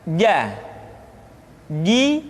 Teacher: huruf j yang dikeluarkan dengan menyentuhkan tengah-tengah lidah dengan langit-langit